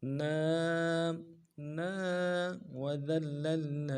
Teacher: نون کے بعد کھڑا زبر ہے اوپر، ایک الف دار میں کھینچیں گے